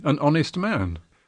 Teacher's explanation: but we all say an honest man yeah in other words we don't pronounce the h there it's written but not pronounced